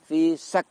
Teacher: ketika kaf kita sukun, di situ terasa ada aliran nafas yang mengalir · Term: sifat hamas